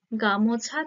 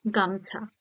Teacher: যাচ্ছে বা ক্ষীণ হয়ে যাচ্ছে তাই না তো তার ফলে এই মাঝের যে একটা ও স্বরধ্বনি রয়েছে সেটা লুপ্ত হয়ে যাচ্ছে বা লোভ পাচ্ছে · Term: মধ্য স্বরালোপ